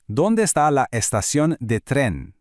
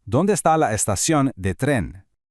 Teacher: Notice that little word at the very end, tren. You'll hear a distinct rolled R.